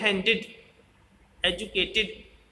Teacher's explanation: ये ईडी वाला जो साउंड है ये इड करके बोला जाता है. तो इसमें भी छोटी ई का साउंड है. ये सेकंड पर वाउल साउंड है.